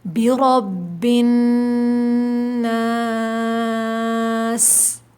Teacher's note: آخر میں سیٹی کی آواز آئے گی۔ نون مشدد پر غنہ ہوتا ہے اور را کے اوپر زبر ہو تو موٹا پڑھا جاتا ہے، اور جس لفظ کے اوپر تشدید ہو اس کو سختی کے ساتھ ذرا رک کر پڑھتے ہیں، ٹھیک ہے۔